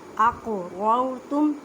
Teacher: قاف کلکلا کریں کیونکہ قاف ساکن ہے